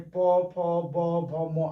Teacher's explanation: प वर्ग, जिसमें प फ ब भ म आता है, इतना का उच्चारण ओठ से होता है। ओठ, ओठ समझ रहे हैं ना, ओठ, आप इसको याद कर लीजिए।